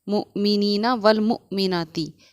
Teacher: حمزہ ساکنہ کے پڑھنے میں ایک بار پھر ہمارا جھٹکا ہوگا،